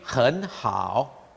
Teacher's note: You take 很好, the 很 has a certain amount of friction, but the 好 has very little. But for Afrikaans speakers, if they're not careful, obviously Dutch speakers, German as well, they go 很好 and overdo the friction.